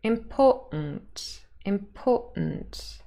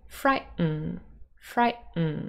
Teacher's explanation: in British and American English we sometimes have the glottal stop before a syllabic · And the first T sound can change into a glottal stop.